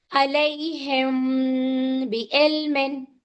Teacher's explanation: جب میم ساکین کے بعد حرف با آتا ہے تو ہم اپنی آواز کو چھپا کر ہلکا غنہ کے ساتھ پڑھیں گے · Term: اخفا شفوی